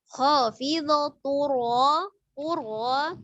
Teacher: Ra sukun ketika sebelumnya dhammah maka dia dibaca tebal. Ra fathah dia juga tebal.